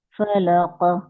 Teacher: काफ का कलकला करें